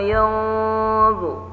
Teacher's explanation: nun sukun bertemu dha, dibaca dengung, ditahan dengungnya dan ditebalkan ya. Ifanya atau dengungnya ditebalkan karena bertemu huruf dha, yaitu adalah huruf isti'la.